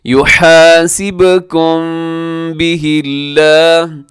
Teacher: آگے او تخفوہ یحاسبکم بہ اللہ، جی یحاسبکم، اس میں یحاسبکم میں با قلقلہ اور آخر میں میم ہے، میم کے بعد با ہے تو یہاں پہ اخفاء شفوی ہوگا، میم کی آواز کو ناک میں رکھیں گے۔ یحاسبکم بہ اللہ، لفظ اللہ سے پہلے ہاں کے نیچے زیر ہے، لفظ اللہ کو باریک رکھیے گا، وقف یہاں بھی کیا جا سکتا ہے کیونکہ یہاں بھی طا ہے۔